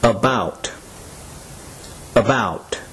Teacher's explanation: the sound in the second syllable that is stressed is the short o sound